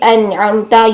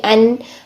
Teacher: نون کو بھی ساکن حالت میں پڑھتے ہیں تو سانس بند ہو جاتا ہے